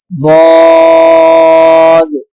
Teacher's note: ضاد بھی حروف مستعالیہ میں سے ہے، اسے بھی پر پڑھیں گے